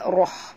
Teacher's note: Kemudian rahmah, huruf ra' kena baca tebal. Ra' bari atas kena baca tebal. Ra' tafkhim.